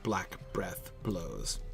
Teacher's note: it's impossible not to stress all three of those syllables in a row